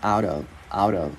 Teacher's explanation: mình luyến qua chữ out thành chữ d tiếng Việt